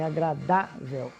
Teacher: Primeiro que são paroxítonas, você tem agradável, certo? Então você tem a penúltima sílaba mais forte.